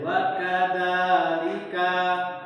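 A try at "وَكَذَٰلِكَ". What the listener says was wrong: Jangan agak panjang sedikit itu. Ulang lagi.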